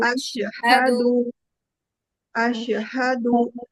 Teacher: From your deepest part of the throat, ha should come.